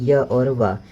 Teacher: आप य और व का जब उच्चारण करते हैं तो इसमें किसी प्रकार का संघर्ष नहीं होता है। यह अर्ध स्वर भी कहा जाता है। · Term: संघर्षी हीन व्यंजन